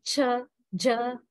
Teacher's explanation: they are produced by constricting the air and then directing it over a sharp edge namely the teeth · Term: sibilance